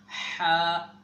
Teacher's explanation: ہا کو حلق کے بالکل درمیانی حصے سے ادا کیا جاتا ہے